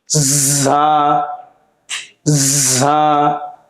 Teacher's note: এই হরফটি বলার সময় দুই দাঁতের মাঝখানে হালকা ফাঁকা থাকবে এবং বাতাস জারি থাকবে।